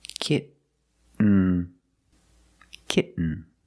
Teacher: You don't release, and then you fall to an N, kitten. When you make the stop T, the tongue is up, almost in the N position, so you don't have to change much.